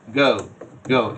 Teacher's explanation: যদি সো এটা হচ্ছে আও, এরপরে আর এটা হচ্ছে ও, অ উ, অ দিয়ে শুরু হয়েছে, উ দিয়ে শেষ হয়েছে